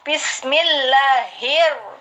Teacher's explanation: Karena alif lamnya tidak dibaca dilebur. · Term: alif lam samsiyah